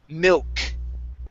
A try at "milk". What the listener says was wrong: Okay, the word is mill, milk. Okay, pronounce milk. That L sound, mill. Instead of mew. Mill. Okay, mill. It's mill, milk.